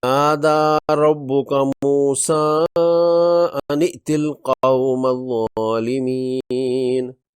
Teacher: موسیٰ کھڑی زبر سے الف مدہ کے قائم مقام ہے اور مفتوح حمزہ دوسرے کلمے میں ہے۔ موسیٰ کی کھڑی زبر کو 4 حرکات کے برابر لمبا کر کے پڑھیں گے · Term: مد منفصل